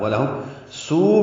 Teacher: ولہم سو میں واو مدہ ہے اور اس کے بعد حمزہ آنے کی وجہ سے مد متصل